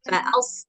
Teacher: Sod, dia punya sifat isti'alah. Isti'alah itu maksudnya berat, tebal. Nah, jadi karena tadi tempatnya sama, maka lidahnya jangan digeser.